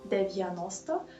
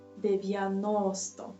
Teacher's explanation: we have 4 syllables, and the third one is stressed